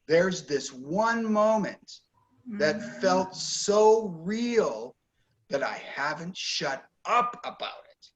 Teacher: Actually, this is stressed, one moment, so real is stressed, and shut up is stressed. Notice that those are the most important words.